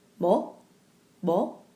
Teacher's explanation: it has a slight B sound to it. So to do that, you want to relax the lips more.